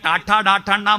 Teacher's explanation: നാവിന്റെ അറ്റം മൂർദാവിൽ കുത്തി പറയുന്ന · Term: മൂർധന്യം